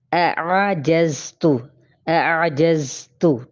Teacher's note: اب اس کے اندر دیکھتے ہیں تو آپ یہ دیکھیں کہ ٹھیک ہے، پہلے حمزہ باریک ہے اور عین بھی باریک ہی ہے، لیکن وسط حلق سے ادا ہوگا